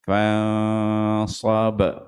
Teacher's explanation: Far ghab macam fansab. Kalau ini nun dengan sad dah ikhfa kat situ. Dia dengung 2 harakat. Fansab. Lepas tu far tebal.